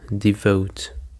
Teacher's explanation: Devote. And the stress is on the second syllable